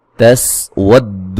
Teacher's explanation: واو کو دال سے سختی سے ملائیں گے